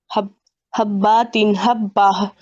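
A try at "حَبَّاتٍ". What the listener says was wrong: देखिए, हब बा नहीं, बा पर तशदीद है, अलिफ नहीं है, तो इसको पढ़ेंगे हब्बातिन।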